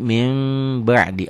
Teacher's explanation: Bunyi n-nya berubah menjadi m samar sedikit seperti Ikhfa Syafawi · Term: iqlab